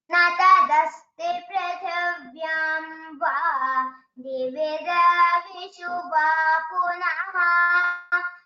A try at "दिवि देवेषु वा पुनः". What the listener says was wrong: you are chanting it as Devishu, is it? It is Deveshu. Divi deveshu va punaha.